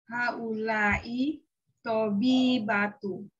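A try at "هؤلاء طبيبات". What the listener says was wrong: Tobi ba, jangan lupa kalau tidak ada alif lam jangan ragu-ragu untuk mentanwinkan ya. Haula'i tabibatun ya, azwajuhunna mudarrisuna.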